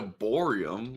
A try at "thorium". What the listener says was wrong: Thorium, you wingnut. No, you said borium. No, it's thorium. No, you said it with a B.